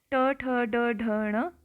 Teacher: ट वर्ग ट ठ ड ढ ण इसमें आप देखोगे कि जो आपका जीभ है वो आपके मूर्धा को टच कर रहा है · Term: मुर्धन्य, मूर्धन्य